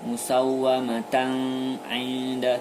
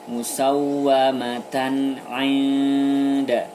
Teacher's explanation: ada tanwin bertemu dengan ain, maka dibaca jelas atau izhar. Tidak boleh dibaca dengung. Musawwamatan inda, tidak boleh.